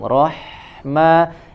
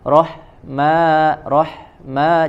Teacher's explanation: contoh di kata setelah Bismi itu ada rohmani yang huruf h huruf H memiliki sifat sama mengalir suara ya Dia memiliki sifat rohawah maka tidak boleh ada jeda ketika menyempurnakan sifat ruhawah pada huruf